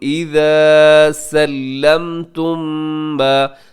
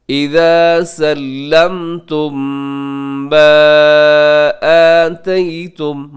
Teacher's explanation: فلا جناح علیکم اذا سلمتم ما, سلمتم کے آخر میں میم ساکن ہے, میم ساکن کے بعد پھر میم, تو یہاں پہ کریں گے ادغام شفوی غنے کے ساتھ. اذا سلمتم ما آتیتم, مد منفصل.